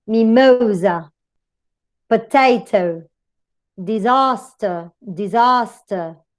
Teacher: So it goes stressing the middle syllable. First syllable weak, stress goes to the next one.